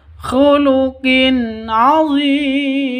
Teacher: Bacaan izhar halqi jelas terang tidak boleh disentak tidak boleh didengungkan. Khuluqin adzim salah.